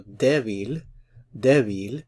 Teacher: notice the stress is on the first syllable, so débil, débil.